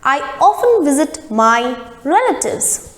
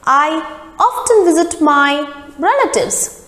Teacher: in case of american pronunciation the t sound is prominent · Often is the British pronunciation and often is the American pronunciation. Now what happens in British pronunciation, we need to drop the sound of T in the word and it becomes often.